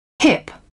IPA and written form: hɪp (hip)